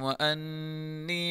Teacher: انی نون مشدد غنہ کے ساتھ پڑھیں گے